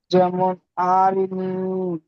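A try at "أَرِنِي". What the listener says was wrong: আতে আপনি টান দেবেন না, আরিনি।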